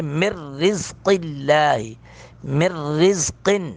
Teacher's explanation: جائے، یہاں پہ تو ادغام با غنہ ہے نا، لکم من، اب من نون ساکن کے بعد را آ گئی، یہاں پہ ادغام بلا غنہ ہوگا ، من کو پڑھیں گے، مر رزق اللہ، مر رزق، کن